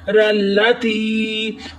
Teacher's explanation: یا ساکن اس سے پہلے زیر تو یا مدہ ہوتا ہے، ایک الف کی مقدار کھینچ کر پڑھیں گے